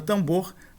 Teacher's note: Em tambor, a pronúncia, quando nós pronunciamos a palavra tambor, nós não pronunciamos o M e o que nós fazemos é nasalizar o A, como se fosse escrito desse modo aqui, tambor, e não tambor.